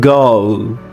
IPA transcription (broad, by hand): oʊ